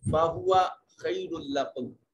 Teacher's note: खैरुल्लकुम रा मुनव्वन है, और उसके बाद हरूफ यरमलून में से लाम है, तो इदगाम बगैर गुन्ना के होगा। · माकबल मफ्तू तो या लीन है, इसको नरमी से अदा किया जाएगा